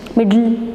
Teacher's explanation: in words like middle and little, the plosive sound d and t are followed by the lateral sound l, and in such words the tongue does not leave the teeth ridge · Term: lateral plosion